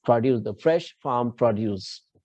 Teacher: So mostly on verbs, you will have accent on the second syllables. And if that word is a noun, it will be having the accent on first syllable